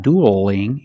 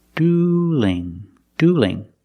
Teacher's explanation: now the L and dueling is between vowels so we have to change that L to a light l so it's not doodling it's dueling dueling they're dueling somebody's gonna